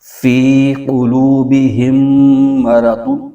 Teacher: اور آگے ضاد، دو پیش دن ہے، تنوین ہے، تو اس کو یوں پڑھیں گے فی قلوبہم مرض، تو ہم یہاں پر میم ساکن سے پہلے، میم ساکن کے بعد دوسری میم آ رہی ہے، تو یہاں پر غنہ ہوگا · ہم نے قوف کو اس کے مخرج سے ہی پڑھنا ہے، یعنی زبان کی جڑ اور تالو کے نرم حصے سے اس کو پڑھنا ہے